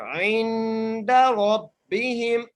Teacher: عین کو نون سے ملائیں گے اور غنہ کریں گے نون پر